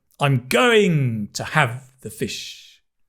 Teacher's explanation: We stress the big words. Going, have, fish. We stress the nouns, the verbs, the adjectives, the adverbs, the big words.